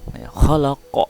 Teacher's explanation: Ketika huruf qalqalah waqaf di akhir atau baris mati, maka huruf qalqalah itu hukum bacaannya menjadi qalqalah kubro atau dibaca dengan pantulan tebal